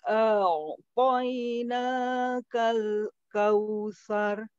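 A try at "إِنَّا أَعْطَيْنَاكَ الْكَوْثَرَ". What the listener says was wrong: Nah, ro-nya ditebalkan. Kal kautsar. Tsar.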